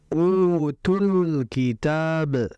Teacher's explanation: Nah, U di situ itu merupakan mad asli dibaca dua harakat.